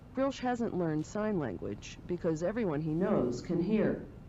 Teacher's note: this very typical newscaster intonation with that very low dip on the word language there